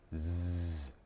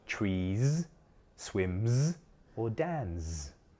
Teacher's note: if the word ends with a voiced sound, such as tree, swim, or Dan, then the s sound is also voiced.